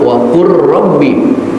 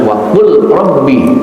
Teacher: lamnya dihilangkan langsung ke R